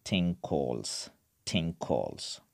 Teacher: both “ng” and “k” these are velar sounds